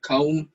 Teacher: au as in kaum is not because the two vowel A and U belong to two different syllables